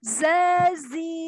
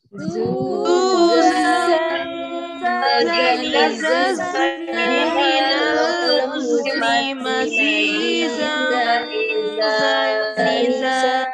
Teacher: Sofir ya, seperti ada siulan burung. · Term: sifat sofir